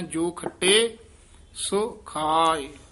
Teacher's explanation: ਸੋ ਦੇ ਹੋੜਾ ਵੀ ਹੈ ਔਂਕੜ ਵੀ ਹੈ ਦਰਮਿਆਨਾ ਜਿਹਾ ਉਚਾਰਨ ਕਰਨਾ